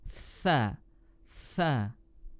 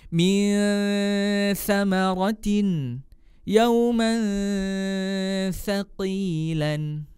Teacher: Huruf tha di mana tempat keluar huruf atau makharijul hurufnya? Makhrajul hurufnya ada di ujung lidah bertemu dengan ujung gigi seri atas